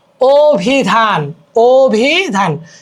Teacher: এখানে আছে অ বাট হয়ে গেল ও